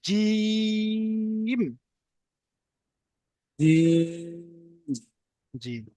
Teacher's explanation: জিমটা যখন উচ্চারণ করবেন জিবের মাঝখানটা উপরের তালুর সঙ্গে মিলাবেন মিলালে কি হবে চেপে উচ্চারণ হবে